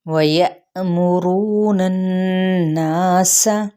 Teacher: نون کی زبر کو نون کے ساتھ ملائیں گے تو غنہ کرتے ہوئے مد اصلی بالالف، اور سین کی حرکت کو لمبا نہیں کریں گے۔